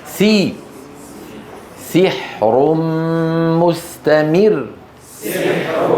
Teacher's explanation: في ناس قالوا سحر سي سي ليست كسره هذه اماله